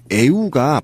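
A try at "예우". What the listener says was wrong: 연도 아니고 애우도 아니야.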